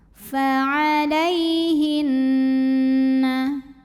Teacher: Berikutnya ada hukum gunnah musyaddadah karena nun bertasydid. Cara bacanya dengung, tahan bunyi n-nya kurang lebih 2 harokat.